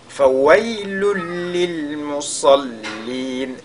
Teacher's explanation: On fait donc idgham bi ghayri ghunna ou bien idgham bila ghunna. Il faudra donc qu'il y ait une fusion totale du tanwin dans la lettre lam qui suit.